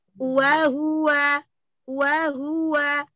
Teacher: Yang wow yang kedua jangan dipanjangkan, satu harokat saja.